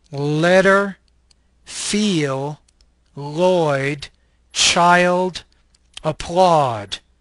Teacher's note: This is an alveolar, lateral liquid voice consonant.